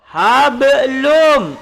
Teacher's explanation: Hablum mim, ini sama, tanwin bertemu dengan mim ataupun nun mati bertemu dengan mim disebut dengan idgham ma'al ghunnah, masuk serta dengung.